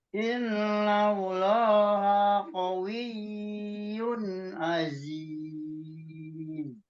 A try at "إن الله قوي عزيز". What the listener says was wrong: Iya, jangan ditahan berlama-lama juga, jangan juga dihilangkan, ditekan aja cukup ditekan, Pak. Iya, tasdidnya. Jangan dikawiyun, itu mah kelamaan kalau ditahan.